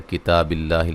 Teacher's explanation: کتاب اللہ، لفظ اللہ کو باریک پڑھیں گے، اس سے پہلے جو ہے وہ زیر ہے، اور تا کو لمبا کریں گے ایک الف کی مقدار کے برابر